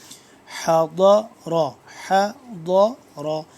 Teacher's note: ضاد کا مخرج آپ کو بتا دوں ایک دفعہ پھر کہ زبان کی بائیں کروٹ اوپر والے داڑوں کے ساتھ جب ٹچ ہوتی ہے تو ضاد صحیح طرح سے ادا ہوتا ہے